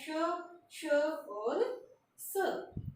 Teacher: ऐसे वर्ण जो अघोष भी हैं, ऊष्म भी हैं और महाप्राण भी हैं